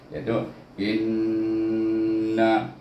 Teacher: In di sini bertemu hamzah, bertemu hamzah baris bawah bertemu dengan nun bertasydid. Baca dengan gunnah dua harakat.